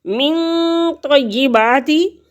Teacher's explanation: من طیباتی، نون ساکن کے بعد تو حروف اخفاء میں سے آگے، تو یہاں پہ ہم غنہ کریں گے، 2 حرکت کے برابر ناک میں آواز کو چھپائیں گے۔ تو یا تشدید ہے، تو 2 دفعہ پڑھا جائے گا، پیچھے بھی ملے گی اور خود بھی ادا ہوگی۔